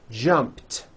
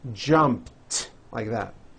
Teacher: So jump becomes jumped, with a T sound at the end.